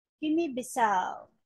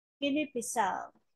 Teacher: It's a four-syllable word and stress is on the fourth syllable.